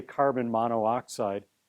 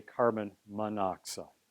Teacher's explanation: we don't say carbon mono oxide right we say carbon monoxide we just get rid of that extra vowel